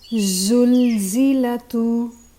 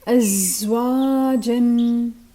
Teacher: So the tip of the tongue gets closer to the lower incisors and the rest of the tongue is pushed back. Remember, tongue isn't pushed against the teeth. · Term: Za